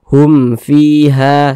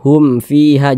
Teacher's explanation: karena izhar maka dibaca jelas tidak berdegung jadi baca pendek saja Hum fiha seperti itu Hum fiha Jangan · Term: izhar syafawi